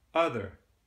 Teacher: you're adding rhoticity to this schwa sound, so it becomes more like as in other, Now in some accents, when this R-ness gets dropped, other, that becomes a non-rhotic accent.